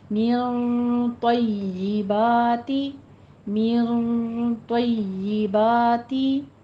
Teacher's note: نون ساکن کا ہمارے پاس اخفا ہو رہا ہے اور اخفا کے بعد ہمارے پاس حروف مستعلیہ میں سے ہے تو اس لیے اخفا بھی پر ہوگا